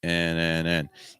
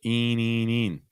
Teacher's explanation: If you find you're saying een, that's the wrong vowel. We're not trying to get an E sound, trying to get an I sound.